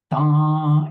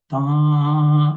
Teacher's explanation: Da is nasal plus the high tone. Da goes up. Da, you can go a long ways, but then you have to cut it up.